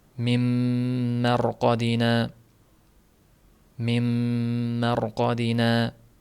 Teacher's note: nun butun yo'qolib ketadi mim harfi bilan talaffuz qilinadi